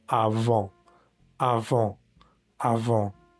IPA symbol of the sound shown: ɑ̃